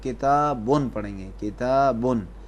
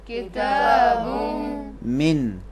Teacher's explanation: ملائیں گے تنوین کے بعد، حروف یرملون میں سے ہے، ان 6 حروف میں سے ہے، اسی لیے اس تنوین کو بعد والے حرف میں ملا کر پڑھیں گے